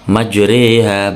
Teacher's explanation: Imalah ialah memiringkan bunyi fathah kepada kasroh. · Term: bacaan imalah